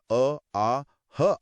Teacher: सबसे अंदर गले से कंठ्य जिसमें क वर्ग अ आ ह आते हैं।